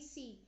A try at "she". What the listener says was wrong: every time you are saying this word, you are pronouncing it as C. So C is a wrong pronunciation. It should be she.